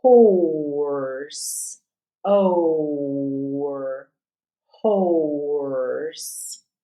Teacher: the o r is really going to dominate but you're going to hear a preservation of that long o